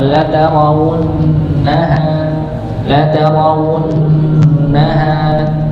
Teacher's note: ada nun yang bertasydid, maka ditahan juga. Hanya dibaca 2 harakat.